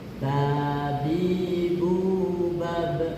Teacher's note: huruf ba, dua bibir atas bertemu dan dirapatkan.